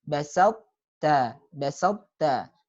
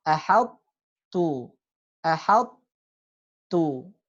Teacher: sifat tebal dari sifat itbaq dari to-nya dia masih tersisa